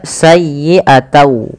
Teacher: Awalnya bunyi sayyi'atan dengan huruf nun yang diakhirkan, karena dia bertemu dengan waw, huruf n-nya itu diganti dengan waw. Maka sayyi'atau. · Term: idgham